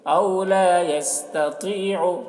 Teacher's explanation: طا کو پر پڑھیں گے، طا حروف مستعلیہ میں سے ہے